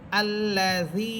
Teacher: এবং জেরের পর ইয়া সাকিন আছে এখানে, জাল ইয়া জের জি, জেরের পর ইয়া সাকিন, এই জন্য এখানে একালি পরিমাণ টান হবে